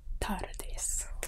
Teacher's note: buenos tardes has more of your tongue touching your teeth